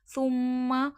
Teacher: تا نرمی کے ساتھ میم مشدد کا غنہ